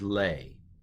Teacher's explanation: The aleph kind of goes away, kind of disappears in the sound here. It's called a quiescent aleph.